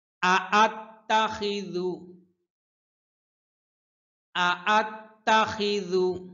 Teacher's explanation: এখানে দুইটা হামজা, দুইটার হামজার উচ্চারণ সেপারেটলি স্পষ্ট করে উচ্চারণ করতে হবে।